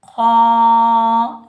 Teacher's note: क़ाफ़ हरूफ़ मुस्तअला में से आ रहा है तो इसको हम मोटा पढ़ेंगे। काफ के ऊपर ज़बर, आगे अलिफ खाली है, ये अलिफ मद्दा है, इसको हम एक अलिफ की मिकदार में खींच कर अदा करेंगे।